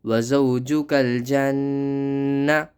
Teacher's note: یہاں نون پر تشدید ہے تو سختی کریں اور جیم نون پر غنہ کریں